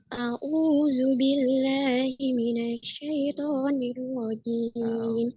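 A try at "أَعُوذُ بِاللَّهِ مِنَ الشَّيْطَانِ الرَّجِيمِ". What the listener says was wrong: Pakainya ain, Bu. Bukan au. Au.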